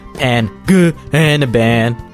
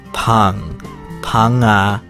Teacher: It's not exactly silent either, so it's not pananaban. You have to continue the ng sound like in singer and donger.